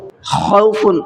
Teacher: خوف، خا کو تھوڑا سا حلق سے نکالنا ہے